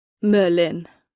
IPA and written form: ˈmœːlːɪn (Merlin)